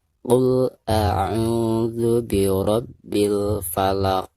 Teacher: Bahkan dihukumi qalqalah kubro di sini ya, karena huruf qaf tersebut itu adanya di ujung kalimat atau di ujung ayat ya. Maka cara membacanya itu harus dipantulkan dengan suara pantulan yang lebih jelas ya, karena dihukumi qalqalah kubro.